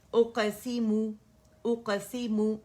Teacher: गुन्ना नहीं डालना मीम के अंदर, हमने मुंह करके नहीं पढ़ना है, इसे स्ट्रेच नहीं करना है। और ना गुन्ना, एक काउंट का जो नेचुरल गुन्ना है ना, जब हम इसे अदा करते बस वही है जो हमें सुनाई देगा।